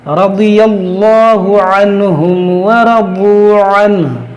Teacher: یہاں پر را کو موٹا کریں گے، بہت موٹا کریں گے، یہاں پر یہ لام موٹا کریں گے